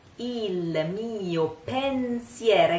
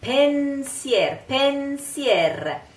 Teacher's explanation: Il mio pensier, il mio pensier. Again, an N that is quite nasal and very short